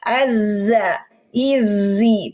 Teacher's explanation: tidak ada suara yang tebal berarti dia istifal terhampar lidah kita